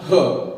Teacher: स्वर यंत्रामुखी सिर्फ एक ही व्यंजन है, स्वर यंत्रामुखी, जो स्वतंत्र होके मुख से निकलता है, ह, मतलब सिंपल तरीके से बोल सकते हैं इसे, ह स्वर यंत्रामुखी कह सकते हैं। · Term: स्वर यंत्रामुखी व्यंजन